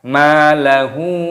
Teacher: Malahu, dibaca panjang, pada mimnya ada tanda alifnya matobi'i, dua ketukan.